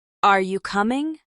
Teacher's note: When you're asking a yes or no question, your voice goes up at the end. "Are you coming?" goes up.